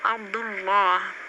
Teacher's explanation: berarti Allahnya tebal karena sebelumnya dhammah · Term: tafkhim